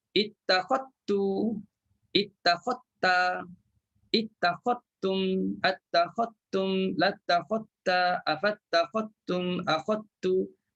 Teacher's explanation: Hilang terus huruf zal. Dalam bacaan lah. Tulisan tu tetap ada.